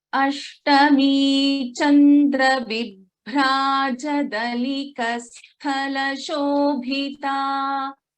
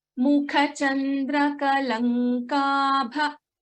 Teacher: just little more stress on the Mahaprana, Kha and Tha and Kha.